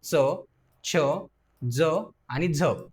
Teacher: आहेत यानंतर बघा दंततालव्य आता बघा दंत तालव्य म्हणजे काय तर जिभेचा जेव्हा दातांना आणि टाळूच्या वरच्या भागाला स्पर्श होतो आणि त्या उच्चारातून जे वर्ण बाहेर येतात त्यांना आपण दंत तालव्य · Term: दंत तालव्य वर्ण